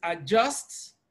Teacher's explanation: even though we have the letter D in adjust D is silent